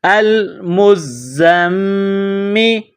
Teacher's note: میم پر تشدید ہے تو یہاں پر غنہ کریں گے